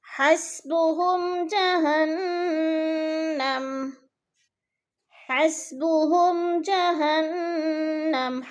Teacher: میم ساکن کے بعد جیم آ گیا ہے تو یہ اظہار شفوی ہو رہا ہے اور یعنی غنہ نہیں کریں گے. جہنم نون مشدد ہے، سختی سے جمع کر پڑھیں گے.